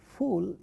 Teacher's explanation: Fa in a word like fool of English is a labiodental sound. What is involved in the production of this sound is if you try saying that, fa is lip and teeth.